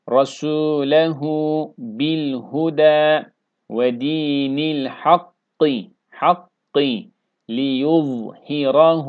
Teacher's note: Buradaki za harfi peltek kalın.